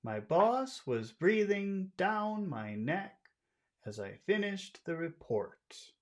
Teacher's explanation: we're going to give everything a high tone except the final syllable